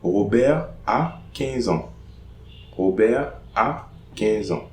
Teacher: No liaison between Robert and a.